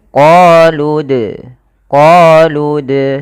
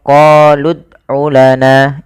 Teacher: lafal Dal sukun di sini ada bacaan kita namakan dengan qolqalah dalam pelafalannya kita harus memantulkan dalnya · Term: qalqalah